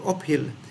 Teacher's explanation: a P with aspiration